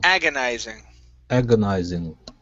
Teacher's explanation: The stress is at the very beginning.